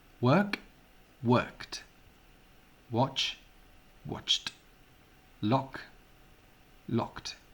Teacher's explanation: Aquest últim so, el so K, és un so sord, el so Ch és sord